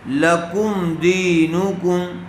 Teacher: لکم ایسے غنہ کر کے نہیں پڑھیں گے، بلکہ لکم دینکم۔